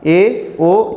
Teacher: इनका उच्चारण अगर हम करते हैं तो मात्र हमारा मुख जो होता है आधा बंद रहता है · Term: अर्ध समृद्ध स्वर